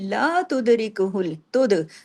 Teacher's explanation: दाल पे कलकला कीजिए क्योंकि दाल देखिए जजम के साथ है।